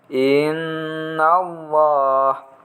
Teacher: itu bacaan mendengung nih bertasydid dibaca dengan dengung yang lama